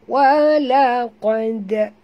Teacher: Qaf ni kena tebal, dal ni tak perlu tebal, lantun saja ya. Walaqad macam tu ya.